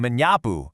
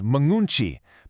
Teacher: When the prefix mi encounters a word starting with S, K, or P, that starting consonant drops out completely to create a much smoother sound.